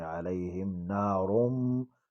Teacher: تنوین کے بعد میم یرملون میں سے میم آئے ہیں، یہاں ادغام یرملون ہوگا اور میم مشدد بھی ہے، ایک الف کی مقدار اس میں ٹھہریں گے.